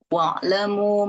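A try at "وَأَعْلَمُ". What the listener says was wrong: Jangan dihantam wa'lamu tapi wa'alamu. wa'alamu.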